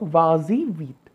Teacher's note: we will add an extra s to the verb, va-zy vite for the purpose of liaison